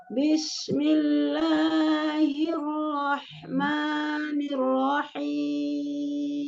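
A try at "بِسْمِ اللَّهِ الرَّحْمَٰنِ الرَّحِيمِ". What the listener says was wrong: Sin kecil as-sofir ya, bukan tafasi, bukan bish. Bis. Turun dulu rahang bawahnya.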